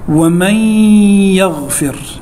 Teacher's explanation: الإدغام في قوله تعالى: ومن يغفر، نون ساكنة بعدها حرف الياء، والياء من حروف الإدغام بغنة